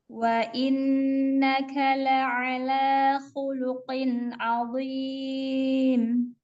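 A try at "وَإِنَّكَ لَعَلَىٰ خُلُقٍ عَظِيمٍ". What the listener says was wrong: Qafnya tidak terlalu khuluqin ya, terlalu ke belakang ya. Jadi agak ke depan sedikit ya. Khuluqin. Jadi khuluqin qin.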